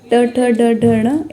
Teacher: ट वर्ग है, ट, ठ, ड, ढ, ण, इनका उच्चारण जो है वो मूर्धा से होता है